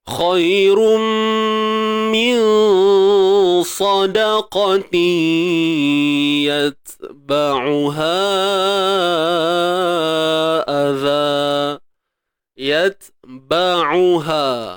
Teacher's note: Ta ni bila kita matikan, ingat tahan suara dulu. Syiddah. Tahan suara. Kemudian baru hams.